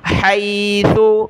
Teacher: हा को गले से निकालें, सा पर ज़बान निकालनी है